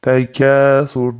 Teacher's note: kafni alif madni berib bir ikkuncha cho'zib o'tib ketamiz